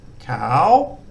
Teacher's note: but with this vowel it's actually considered to be live so high class central consonant live vowel but it's a short vowel it gives a rising tone · So high class initial consonant, live vowel, but it's a short vowel. It gives a rising tone. So you need to sort of say something like cow, but short.